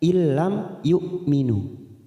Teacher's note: Illam mim sukun bertemu ya idhar safawi, kita baca jelas